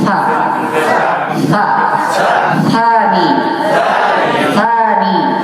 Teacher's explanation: letaknya adalah di ujung lidah, disentuhkan ke gigi seri bagian atas